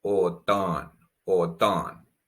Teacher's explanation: there's a difference between the first o which is o and the latter one which is ah